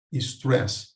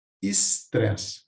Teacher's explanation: O falante acaba adaptando essa palavra a uma adaptação de pronúncia, sendo pronunciada pelo português, pelo falante português, estresse. Vejo que também há uma introdução de um I para corrigir essa estrutura que é estranha a um falante do português.